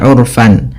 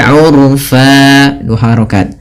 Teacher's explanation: Ketika kita berada di akhir bacaan ini, kita baca dengan bacaan mad iwad, yaitu mengganti fathatain menjadi panjang. Sebagaimana mad thabi'i urfa bukan lagi urfan, tapi urfa dua harakat.